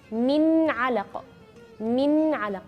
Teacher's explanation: Di huruf ain yaitu bagian tengah-tengah tenggorokan